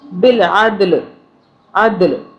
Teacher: دال پہ قلقلہ کریں گے، دال کو ہم جھٹکے سے پڑھیں گے